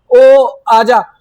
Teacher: तो ओ को बहुत लंबा खींच देते हैं हम लोग। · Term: प्लुत स्वर